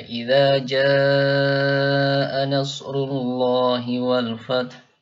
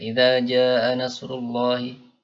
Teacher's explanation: Ja-nya itu harus panjang, ya, 4 atau 5 harokat. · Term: Mad wajib